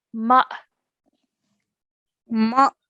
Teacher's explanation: we have to join the meme to the alif with a jerk sound, a soft jerk sound.